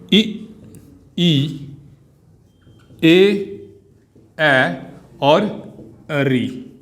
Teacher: अग्र स्वर जो हैं वो जीभ के आगे वाले हिस्से से प्रयोग किए जाते हैं